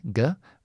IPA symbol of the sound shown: g